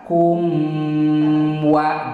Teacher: keur nyebut kum biwir duanana antel pas nyebut wa biwir tina antel kana muka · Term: izhar sapawi